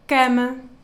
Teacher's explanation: So for example, an A can be open, as in la, or closed, as in para, or even reduced, as in cama. You see, like the last A, it's so reduced. Sometimes it even seems like you don't hear it